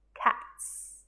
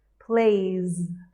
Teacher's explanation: cats has a soft s cats and plays has more of a z sound